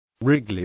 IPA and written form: ˈrɪɡli (Wrigley)